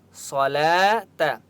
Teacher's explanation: सलात, लाम खड़ा ज़बर ला, लाम के ऊपर खड़ा ज़बर है, एक अलिफ की मक़दार खींच कर पढ़ेंगे, इस वाव को नहीं पढ़ेंगे।